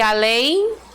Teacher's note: na oxítona nós temos a última sílaba acentuada mais forte